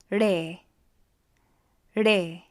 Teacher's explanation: This is a harder R sound. It almost sounds like a D sound.